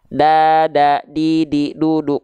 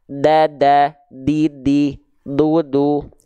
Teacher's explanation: Huruf dal itu dilafalkan dari ujung lidah kita sentuhkan ke pangkal gigi sari atas kita. Ya, bukan ke langit-langit.